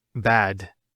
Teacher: Notice the elongation of the a sound.